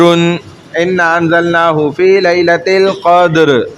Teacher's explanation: جیسے قدر انا انزلناہ فی لیلۃ القدر، تو را بھی ساکن اس سے پہلے دال بھی ساکن اور اس سے پہلے والے حرف قاف پہ زبر تو موٹا پڑھیں گے. را ساکن ما قبل ساکن ما قبل مضمون رو ساکن ہے اس سے پہلے والا حرف ساکن ہے, اس سے پہلے والا حرف پہ پیش ہے.